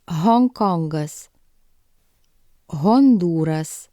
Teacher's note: in English this sound is voiceless H but in Lithuanian this sound is voiced H